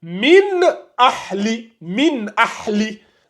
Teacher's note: Donc vu que il y a la Hamza qui vient juste après le noun sakina, on lui met sonun et on prononce clairement le noun avec son sukun. On dit min avec le in, le in ressort bien, ça donne min ahli min ahli. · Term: izhar, le izhar